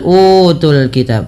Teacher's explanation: panjangkan u dua harakat karena ia mad badal · panjangkan u 2 harakat karena ia mad badal. Mad badal merupakan mad yang terjadi ketika adanya huruf hamzah bertemu dengan huruf mad.